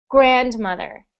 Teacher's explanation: we put the stress on the syllable the first syllable